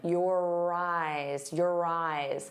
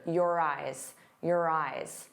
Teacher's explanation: And notice how your and eyes link together. You're going to hear that R sound on both sides of the word if we link them.